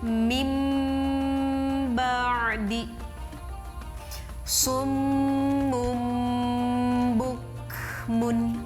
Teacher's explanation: Kita dengungkan selama 2 ketukan atau 2 harokat. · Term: iqlab